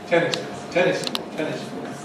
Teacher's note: [ˈtenɪs] is strong; [kɔːt] is weak. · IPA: [ˈtenɪs kɔːt]